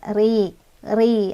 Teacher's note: cara bacanya adalah ditipiskan atau dengan mulut yang agak mundur dan tampak sedikit meringis